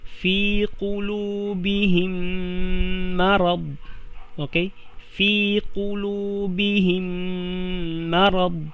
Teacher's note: Mim na sukun and then mim. Okay, yung unang mim papasok na siya sa pangalawang mim.